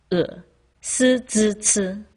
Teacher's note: with a slightly different tongue position than it is in english the tip of the tongue touches your bottom teeth and the back of your tongue is high up in the back your mouth basically in the same position as ooh except your lips aren't